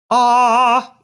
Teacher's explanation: typically ah is one of the harder vowels to master really carefully right because it is a back vowel